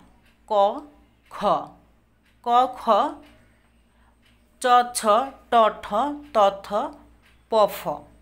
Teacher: যে ধ্বনিগুলো উচ্চারণের সময় কম্পন কম লাগে সেগুলো হচ্ছে অঘোষ ধ্বনি